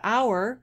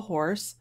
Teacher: in hour the h is not aspirated and in horse it is